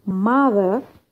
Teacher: nouns اللي عندهم two syllables قلنا يجي stress يجي first syllable. so stress on the first syllable